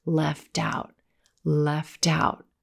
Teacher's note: we've got that very North American flap T sound